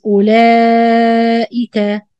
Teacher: the واو with round zero, we don't pronounce it, it's not exist